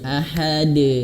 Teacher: pantulan huruf dal itu jangan tertahan ya. Ahad, tidak, tapi langsung saja ahad. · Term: qalqalah